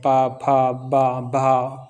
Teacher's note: पा, फा, बा, भा औष्ठ व्यंजन होते हैं